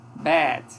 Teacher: é uma vogal baixa uma vogal anterior não arredondada